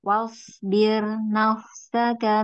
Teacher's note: birnya tipis aja wasbir kan sebelumnya kasr ya